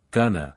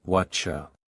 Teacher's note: going to is often pronounced as gonna, and what are you can sound like whatcha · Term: connected speech